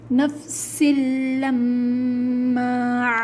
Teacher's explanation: سختی کے ساتھ لام پر پریشر دے کر پڑھا جائے گا۔ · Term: تشدید